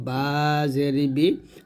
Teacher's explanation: বা টা দুই ঠোঁট মিল করে আমরা উচ্চারণ করব